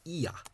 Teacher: In Munster, E fada A is pronounced as ia